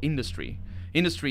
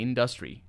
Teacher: so the tonic is right at the beginning